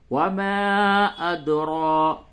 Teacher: وما، حمزہ دال زبر اد، را کھرا زبر را، اد را، اس را کو پڑ کر کے یعنی موٹا کر کے پڑھیں گے